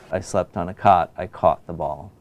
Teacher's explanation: the second vowel is your lips are slightly rounded and it's pronounced a little bit further back in the mouth, but not much.